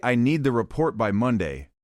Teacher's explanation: with stress on need and Monday so the listener knows the priority and timing